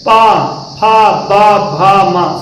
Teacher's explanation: पा फा बा भा मा सब में ओठ है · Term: ओष्ठ